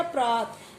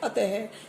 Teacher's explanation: अत, विसर्ग हटा देंगे तो अत बनेगा और विसर्ग लगा देंगे अतः। तो विसर्ग लगाने के बाद है की ध्वनि निकलती है। विसर्गों का उच्चारण है के साथ किया जाता है।